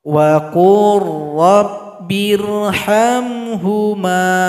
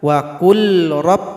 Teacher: lam sukun ini tidak dibaca lagi karena dia telah bergabung kepada huruf Ro Jadi lancarkan saja nanti huruf q kepada huruf ro wa qurbirhamhuma